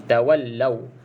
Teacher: pastikan bunyi lau sebab waw ni ada tanda mati. Okey, dia bukan waw mat. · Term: Mat lin